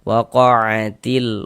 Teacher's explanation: huruf yang memiliki tanda baca fathah ini dibaca panjang, sehingga wa dibaca panjang, mad tabi'i panjang 2 harokat